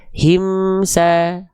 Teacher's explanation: Gak boleh terpantulkan mim sukunnya.